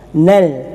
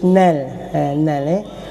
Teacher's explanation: memang ada hamzah wasal, tetapi dikhifakkan, disembunyikan, terus wasal kepada huruf lam, syiddah. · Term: alif lam samsiah